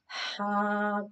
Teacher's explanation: this is pronounced from the middle part of the throat